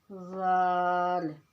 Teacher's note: नोक ज़बान और स्नाया उलिया के किनारों से ये अदा होगा